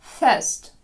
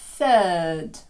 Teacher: F вимовляємо прикусуючи губу нижню F тоді як кінчик язика між зубами на TH